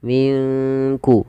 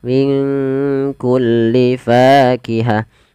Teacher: nun mati ketemu kaf. Di sini kita namakan dengan bacaan ikhfa. Maka cara membacanya, samarkan nunnya kepada huruf kaf, minku langsung kepada makhraj huruf kaf.